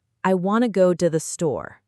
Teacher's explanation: instead of saying to clearly, native speakers often just say t, a really quick, soft sound.